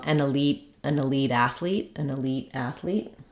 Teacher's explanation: then I might make a flap and Link it to the next um word